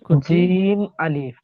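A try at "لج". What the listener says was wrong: জিম আলিফ হবে না লাম জিম হবে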